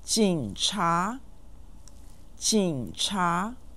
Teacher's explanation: chinga is said with a third and a second tones